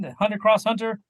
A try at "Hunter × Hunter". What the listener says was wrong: actually just Hunter Hunter. You don't pronounce the X. Hunter.